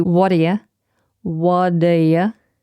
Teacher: So the T becomes flapped, it almost sounds like a D.